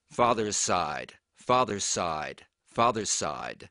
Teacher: father's is actually a Z sound at the end. But because the Z and the S are related, it's actually pronounced as an S when you connected to the word side.